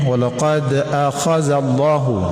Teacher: dal yang mati dipantulkan sedikit. Ini disebut qalqalah sugra. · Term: qalqalah sughra